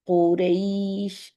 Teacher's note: काफ की दम्मा हमने राउंड करनी है